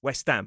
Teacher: somebody potentially with a Cockney accent would drop the “h” and say West ’Am